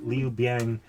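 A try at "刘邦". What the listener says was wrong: So you're adding an I where it's just Bang. Yeah, it's just Bang.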